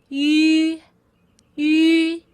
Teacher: It's the same as the final U. It's basically just the E tongue position with the oo mouth shape.